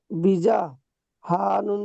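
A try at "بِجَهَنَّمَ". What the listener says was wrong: বিজি নয়, বিজা।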